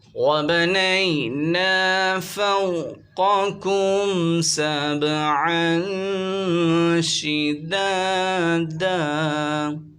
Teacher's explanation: یالین اور واولین کو بغیر کھینچے پڑھتے ہیں · یا ساکن سے پہلے زبر آ رہا ہے، یالین ہوگا، بغیر کھینچے سے پڑھیں گے